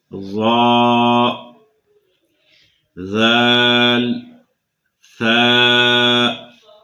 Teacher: ان میں پہلا حرف ظا، یہ پر پڑھا جائے گا ہر حالت میں، یہ حروف مستعلیہ میں شامل ہے، جبکہ باقی 2 حروف ذال اور ثاء یہ حروف مستفلہ میں شامل ہیں، انہیں ہمیشہ باریک پڑھا جائے گا۔ ادائیگی کا طریقہ یہ ہے کہ زبان کا سرا اوپر کے دانتوں کے اندرونی کنارے کے ساتھ لگے گا۔ زبان کا یہ سرا جو ہے، یہ سامنے والا، اوپر کے دانتوں کے اندرونی کنارے کے ساتھ یہ لگے گا، اس سے یہ حروف ادا ہوں گے۔ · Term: حروف لسویہ